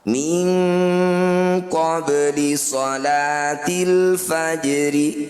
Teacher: Qalqalah artinya memantul, sugro itu kecil. Sesuai namanya, bunyi ba sukun dipantulkan, tapi jangan berlebihan. Cukup dialirkan pantulannya. · Minkum, min qabli, sama-sama bacaan ikhfa ab'ad. Cara bacanya bunyi nun sukun kita ganti jadi eng. Bunyinya jadi eng, dengungkan 2 harokat. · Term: qalqalah sugro